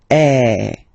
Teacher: the sound is really open, and normally your mouth should be opened a little bit more than with the accent aigu